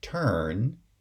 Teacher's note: in a word like turn, it's the sonority peak, and it's pronounced as the high central vowel